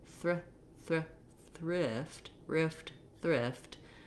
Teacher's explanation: But when I have to do thrift, rift, thrift, my tongue is just barely going into that TH position. It's like the R dominates the word, and then the TH, you have to make do and make it however you can.